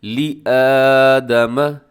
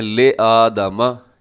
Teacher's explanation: لے نہیں ہے بلکہ لامز لی ہوتا ہے۔